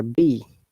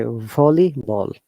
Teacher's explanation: our lips are touching each other b but when you're saying v our lips are not touching that air is going out